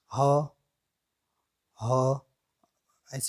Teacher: अगर उच्चारण करेंगे हम तो हमारा मुख पूर्णतया खुला रहता है जैसे हम अ उच्चारण करके देखेंगे हां हां हां हां यह